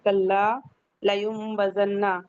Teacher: جب تنوین یا نون ساکن کے بعد با آئے تو اوپر چھوٹا میم لکھا جاتا ہے اور اس سے بدل کے پڑھا جاتا ہے نون کو میم سے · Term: اقلاب